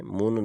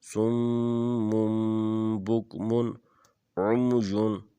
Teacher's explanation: جب تنوین کے بعد با آ جائے تو وہ اقلاب ہوتا ہے، اس نون کی آواز کو میم میں بدل دیتے ہیں۔ یہاں جو من کی نون تھی اس کو میم میں بدل کے پڑھیں گے، مم پڑھیں گے۔